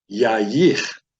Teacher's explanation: So you've got a yod, kamates, that says ya, a yod and a hirak that says ye, and then you have a chaf sofit without any degation in it. So that would be a guttural from the back of the throat, the ch sound